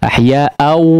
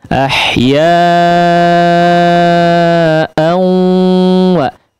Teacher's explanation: Adapun gunnah dia di hidung ya, di khayshum, keluarnya di khayshum. Ahya'au, dimasukkan suaranya ke hidung ya, tidak hanya au di mulut saja ya, tapi ahya'au wa ada suara dari hidung dikeluarkan ya. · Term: idgham bi gunnah